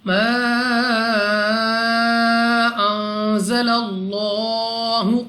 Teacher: لام آف اللہ سے پہلے حرف پر زبر ہے، تو اس لام آف اللہ کو پر یعنی موٹا پڑھیں گے منہ اور آواز کو کھول کر · دوسرا الف سے پہلے ہے زبر الف مدہ، واو ساکن سے پہلے ہے پیش تو واو مدہ۔ الف مدہ واو مدہ دونوں کو 2 سیکنڈ تک کھینچ کر پڑھا جائے گا